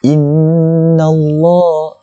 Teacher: Kita perhatikan pada inna. Okay, nun ini nun yang musyaddadah, nun yang bertanda syaddah, nun yang bertanda sabdu. Jadi kita kena dengung dua harakat.